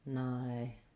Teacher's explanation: So annihilation, there's no H pronunciation there. So you can see that they have the ni stressed, annihilation.